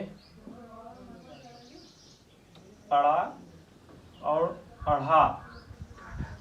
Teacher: उच्छिप्त व्यंजन इसलिए कहते हैं क्योंकि इनका उच्चारण करते समय जिह्वा जो है अचानक से ऊपर जाती है और एक झटके से इनका उच्चारण होता है